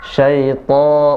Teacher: Syaito, jangan terlalu cepat. Syaito, to-nya tebal 2 harakat.